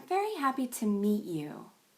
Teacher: And meet is stressed pretty long in time. It's the longest and loudest word in this entire phrase. · Notice there's a big jump up to very and a big jump down to meet. And meet is stressed pretty long in time. · Meet, at the end of the phrase, gets the longest stress. That means you'll spend the most time on it, and you'll be the loudest on that one. · In this phrase, very, happy, and meet are all stressed.